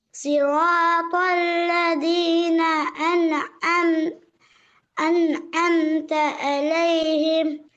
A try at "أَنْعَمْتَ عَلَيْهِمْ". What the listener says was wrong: வரல. அலிஃப் வரணும். என் ஏ أنعمت علي. அலிஃப் எப்படி உச்சரிக்கணும்? ஆண்டா உச்சரிக்கிறது.